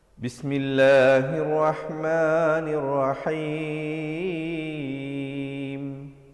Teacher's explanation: Jadi, waqafnya itu tidak cukup panjang. Waqaf yang betul mestilah sekurang-kurangnya 2 harakat.